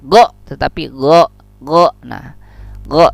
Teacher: harus pelan-pelan, rakhawah ya, berlalu, tidak boleh dadakan.